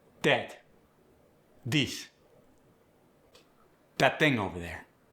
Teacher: The voice th as in that and this get the d.